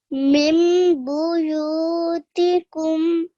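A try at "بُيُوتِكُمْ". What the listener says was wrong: Much better. But also have to hold on this meme for 2 seconds, on this meme makluba. Mim buyutikum.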